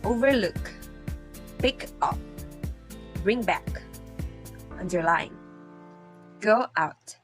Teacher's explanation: college d letter b with compound verbs the reverse is true there is usually a secondary accent on the first component and a primary accent on the second